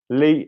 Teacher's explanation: I'm going to add that little I in the end. It's a diphthong.